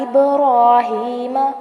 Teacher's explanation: با کو جو ہے ہلائیں گے، کلکلا کریں گے اس کے اوپر